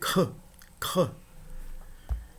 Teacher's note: é uma gutural surda seguida de uma aspiração. A pronúncia seria k, k.